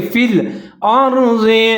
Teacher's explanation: فا کے نیچے زیر ہے، آگے لام ساکن ہے، ملا کے پڑھیں گے